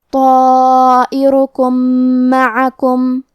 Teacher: یہاں بھی حکم ہے ادغام متماثلین صغیر. ہم پہلے میم کو دوسرے میم میں ملا کے ایک ہی میم غنہ اور تشدید کے ساتھ پڑھیں گے